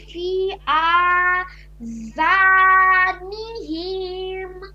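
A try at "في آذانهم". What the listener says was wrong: এনিহিম এটা মোটামুটি ভালো হয়েছে, তাও একটু টান হয়ে যাচ্ছে। ফি আযানিহিম, বুঝছেন? নিহিমে যেন টান না হয়, হরকতে কখনোই টানা যাবে না।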